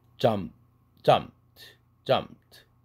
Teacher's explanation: jumped 할 때 앞에 p는 C1, C2, C3의 원리에서 생략되죠